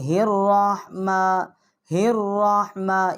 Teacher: تو اس کے آگے جو ہا ہے اس کے نیچے زیر ہے، اس کے آگے جو الف ہے یہ ساکت ہو جائے گا، اور لام جو ہے وہ بھی ساکت ہو جائے گا، را جو ہے مشدد ہے، الرحمہ الرحمہ، اس کو ہم را کے ساتھ اس کو تشدید کریں گے